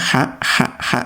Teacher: Jadi ha itu betul-betul bersih, ya, nyaring betul, ya, haknya. Jangan sampai ada suara-suara seraknya.